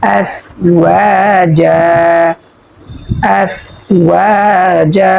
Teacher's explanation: তো প্রিয় দর্শক, আমরা কিন্তু এখানে দুই জবর তানবিনের বামে ওয়াকফ পেয়েছি, সেজন্য আমরা এক জবর বাদ দিয়ে এক আলিফ পরিমাণ টানিয়া পড়ব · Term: মদ্দে আওয়াজ